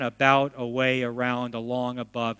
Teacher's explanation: when the first syllable is an a the a goes uh like a u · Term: schwa, schwa A sound